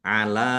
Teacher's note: lam fathah berdiri mad thobi'i panjang dua harakat